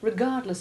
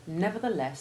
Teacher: The unstressed ending of regardless has the short E2 ivy sound, and the stressed ending of nevertheless has short E1, as does the equally strongly stressed first syllable.